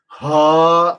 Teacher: حلق کے نیچے سے ادا ہونے والی، اس کو بڑی ہا کہتے ہیں